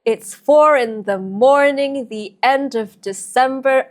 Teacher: Then we have amphibrach, stressed syllables surrounded by unstressed syllables.